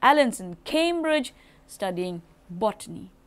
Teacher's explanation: So here Cambridge and botany are the two syllables which are most prominent